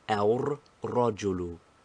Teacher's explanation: In al-rajulu, the lam of alif lam assimilates itself, first of all to the ra, and then secondly we think of it and pronounce it as ar-rajulu.